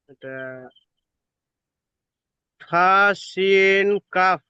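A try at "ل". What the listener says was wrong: কাফ কেন হবে? লাম।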